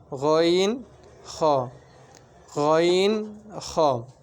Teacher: 3 নম্বর মাকরাজ হলকের শেষ হইতে গইন, খ।